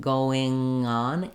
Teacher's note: If you're having trouble with the NG, oftentimes people can say something like going, but then if they say, for example, going on, they have trouble linking from that NG sound to the vowel, and it'll come out sounding like going on.